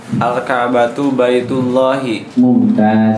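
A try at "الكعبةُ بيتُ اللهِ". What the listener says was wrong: Mumtaz.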